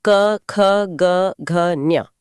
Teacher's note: के यानी कंठ हमारा गला। यहां हवा टकराती है और क वर्ग की ध्वनियां पैदा होती हैं। मतलब क, ख, ग, घ, ज्ञ राइट।